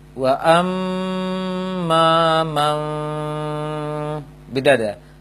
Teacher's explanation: Merubah bunyi nun sukun itu dulu menjadi mim, kemudian langsung direnggangkan bibir sedikit, ditahan selama 2 harokat dengung, baru dibaca harokat ba-nya. Jadi memperhatikan dengung di sini, ba tidak ada pengaruhnya dalam bacaannya. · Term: merubah nun menjadi mim